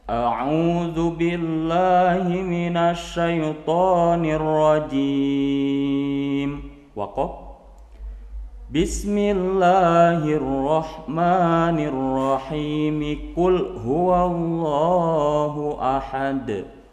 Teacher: Artinya ta'udnya diputus, tapi basmalah dan surat disambungkan. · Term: waslul basmalah bis surah